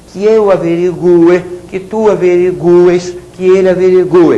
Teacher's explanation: o u é pronunciado porém é tônico